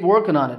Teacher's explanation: the G got dropped from working there